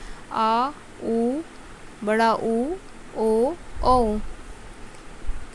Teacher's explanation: पश्च स्वर। जिन स्वरों के उच्चारण में जीवा का पीछे का भाग सक्रिय होता है उसे पश्च स्वर कहा जाता है।